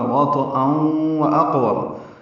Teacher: وطئن تو ساکن ہے، اس پہ قلقلہ ہے، حمزہ پر 2 زبریں، اس کے بعد واو آنے کی وجہ سے ادغام، یہ ادغام ناقص ہے، غنہ ہوگا